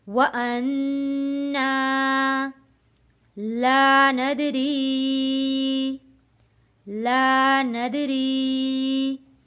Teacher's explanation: دال حروف قلقلہ ہے، ند آواز واپس پلٹ کر آئے گی۔